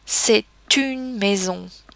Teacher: There we have actually pronounced the T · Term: liaison